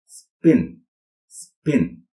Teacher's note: it is an unaspirated p sound, as in spin, spin.